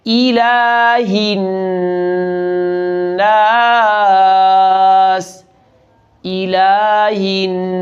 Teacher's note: حمزہ کی زیر کو معروف پڑھنا ہے